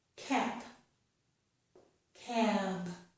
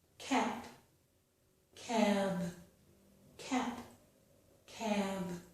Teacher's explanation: Vowels which occur before a voiced consonant, so vowels which occur before B will be longer than vowels which occur before P